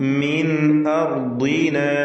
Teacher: നുതഖത്തഫ് മിൻ അർദിന സാകിനത്തായ നൂൻ ശേഷം ഹംസ ഇൽഹാർ ഹൽഖി നൽകി മണിക്കാതെ വെളിവാക്കുക.